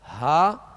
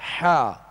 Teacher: ہا حا، اور یہ جو حروف دیے گئے ہیں ہا حا اور نیچے حمزہ عین اور خا غین، یہ حلق سے ادا ہوتے ہیں، حلق سے ادا ہوتے ہیں. ہا جو ہے وہ ابتدائی حلق سے اور حا جو ہے درمیانی حلق سے ادا ہوتا ہے. اور ان میں فرق جو ہے یہی ہے جو آپ آواز کو محسوس کر رہے ہیں، ہا اور حا، ہا حا، یہ فرق ہے ان کے اندر.